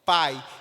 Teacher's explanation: pai e quanto kiwi ele sair mais fraquinho não é verdade o i é uma semivogal é um som um pouco mais fraco o i vai sair muito mais fraco o i e u